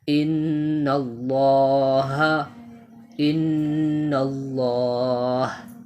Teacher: یہاں پر دیکھیں نون کے اوپر تشدید ہے تو یہاں پر ہم نون مشدد کو 1 الف کے مقدار غنہ کے ساتھ پڑھیں گے